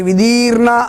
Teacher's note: విధీర్ణ వి లఘు అవుతుంది. దీర్ఘం ఉంది కాబట్టి మరియు దాని తర్వాత ఒత్తు కూడా ఉంది కాబట్టి విధీర్ణ అన్నప్పుడు ది గురువు అవుతుంది